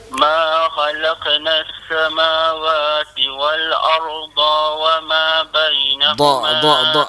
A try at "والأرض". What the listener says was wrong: Dha tu tak panjang. Wal arda